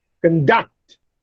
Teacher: If I say conduct, that is, if I put a stress on con, then it is a noun. But if I put a stress on the second syllable, it is a verb